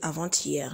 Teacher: donc nous avons le mot avant-hier avant-hier c'est une liaison obligatoires on est obligé de faire la liaison entre le t et hier